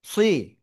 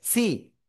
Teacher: সুই, দুই ঠোঁট গোলের কাছাকাছি যাচ্ছে। আর সিনজের সি, দুই দিকে প্রসারিত হচ্ছে, সি সুই। সাদ জের সুই, মোটা আওয়াজ হচ্ছে।